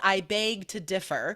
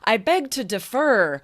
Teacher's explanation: Differ, syllable, first syllable is stressed